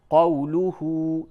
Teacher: یہ جو واو ہے یہ واو مدہ نہیں بلکہ واو لین ہے، کیونکہ واو ساکن سے قبل زبر ہے، اگر واو ساکن سے قبل پیش ہوتا تو یہ واو مدہ ہوتا۔